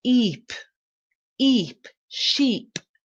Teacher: So the eep at the end is longer, more drawn out sound.